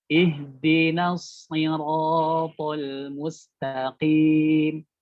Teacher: Nah, itu shadnya jadi kurang tebal ya. Nunnya tipis tapi masuk ke shadnya aja yang tebal. · Jadi yang tebal hanya huruf shad saja ya. Ihdinas. Jadi bukan ihdinas no, tapi na.